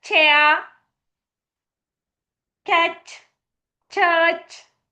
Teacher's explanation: The tip of the tongue touches the alveolar ridge and the body of the tongue touches the hard palate. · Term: palatoalveolar